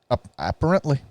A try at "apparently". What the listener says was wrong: You just emphasized the wrong syllable.